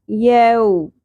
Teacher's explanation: واو ساکن سے پہلے زبر یہ حرف لین ہے، اس کو نرمی سے پڑھنا ہے